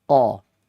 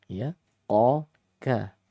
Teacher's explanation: Dia maudhi'ul lisaninya, tempat keluarnya ya ada di pangkal lidah.